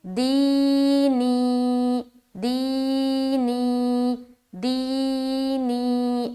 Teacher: دی، یا ساکن سے پہلے زیر ہے، یا مدہ ہوگی، یا مدہ کو ایک الف کی مقدار کے بقدر کھینچ کر پڑھیں گے